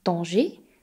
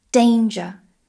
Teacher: The D sound in French is much softer. When we make a D in French, the tongue touches the back of the teeth. D. In English, the tongue touches more towards the roof of the mouth. We can hear the difference if we say danger, danger.